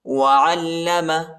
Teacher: وعلم، عین کو لام کے ساتھ ملائیں گے، لام پر شد آیا ہے اور اس کو شدت کے ساتھ پڑھنا ہے